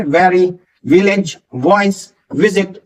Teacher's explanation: जो वी वाले होते हैं जिसमें ऊपर के दांत नीचे के होठों से आपके टच करते हैं। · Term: वी साउंड